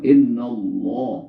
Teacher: Sebelum lafaz Allah berbaris fathah, ya. Kalau suaranya fathah, barisnya fathah, suaranya a, maka Allah dibaca tebal. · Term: tafkhim